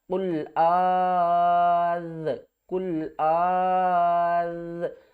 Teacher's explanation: حمزہ ذال مد کھڑا زبر، آز نہیں کرنا، کھڑا مد کو کھینچ کر پڑھنا ہے جتنی اس کی لیمٹ ہے، اور پھر ذال کے ساتھ ملانا